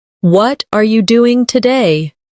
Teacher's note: The stress usually falls on what and doing.